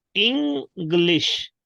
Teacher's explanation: Actually, en sounds as ing, not in.